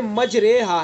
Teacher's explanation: دیکھیں مجریہا ہے، نہ تو زبر پڑھا جا رہا ہے نہ زیر پڑھا جا رہا ہے، دونوں کے درمیان کا پڑھا جا رہا ہے. تو اس لیے یعنی زبر اور زیر کے درمیان کی حرکت یہ ظاہر ہو رہی ہے. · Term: امالہ